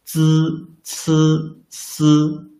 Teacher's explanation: One pronounce z and ci. The front part of the tongue tip touches the inner surface of the upper teeth. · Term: dentals